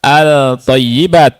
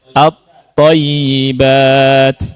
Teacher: Lam sukunnya masuk ke huruf syamsiyah secara sempurna. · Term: idgham syamsi